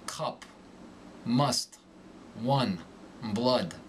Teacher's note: the short youu becomes more nasal